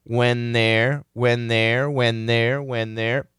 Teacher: we hear that n canceling out that th